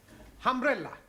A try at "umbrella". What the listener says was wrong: Yes, good, but not humbrella, umbrella.